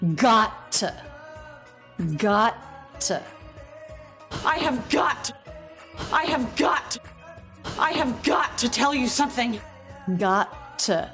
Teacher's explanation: She is linking those with a single but clear and fully released true T.